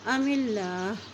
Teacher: اللہ کے نام سے پہلے زیر آ کے ہے تو اللہ کا نام باریک ادا کریں گے